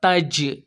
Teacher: تو جیم یہاں پر حرف قلقلہ میں سے آیا، اسی لیے یہاں پر ڈبل آواز نکلے گی۔